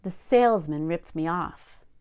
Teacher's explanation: it's a compound noun and we focus on sales, not man.